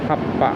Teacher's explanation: Notice that I place stress on the pa, happa